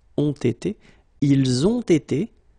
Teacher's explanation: you make the little liaison here as well, between the ont and été with the t